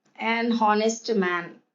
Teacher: the initial consonant h is not pronounced